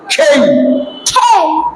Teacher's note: যখন খেই বলবো মুখ থেকে প্রচুর বাতাস বের হবে